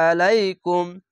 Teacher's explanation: আইনটিকে মোটা করে গলা চিপে পড়বেন